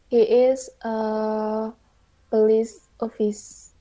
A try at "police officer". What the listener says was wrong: Sir. So ini di kurang R ya. But yeah, it's officer. She's a police officer.